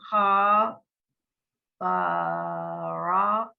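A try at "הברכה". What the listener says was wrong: Not ba. It's not ba. It's b. Just b.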